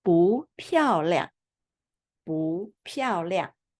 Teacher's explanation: Because 漂 is fourth tone, so we pronounce this 不 second tone. So we pronounce 不 漂 亮.